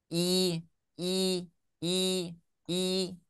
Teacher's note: ketika kita mengucapkan i, maka tengah lidahnya itu naik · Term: kasroh